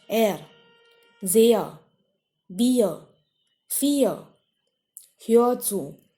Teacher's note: Everywhere that vowel that was before R is said for a longer time. So this R is not pronounced.